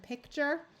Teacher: when people are speaking at least in American English the the TU send the T tends to take on more of a CH sound